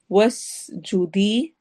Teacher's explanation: سین میں سیٹی والی آواز ہوگی اور اینڈ پر یا مدہ ہوگی